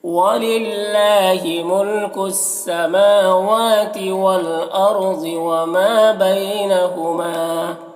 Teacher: وما میں الف مدہ ایک الف کے برابر کھینچیں گے۔ بین میں یا لین ہے، اسے نرم آواز کے ساتھ جلد پڑھیں گے۔ ہما یہاں پر الف مدہ ایک الف کے برابر کھینچیں گے۔ · والارض لام ساکن حرف ہے تو پیچھے والے متحرک حرف واو سے مل کر پڑھا جائے گا۔ ارض میں را کو پر پڑھیں گے، ضاد کو پر پڑھیں گے۔ وما میں الف مدہ ایک الف کے برابر کھینچیں گے۔